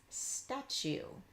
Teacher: when you blend the T sound into long u there's a little bit of a cha sound that pops in there